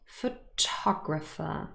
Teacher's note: So stress is on the second syllable. It's not photographer.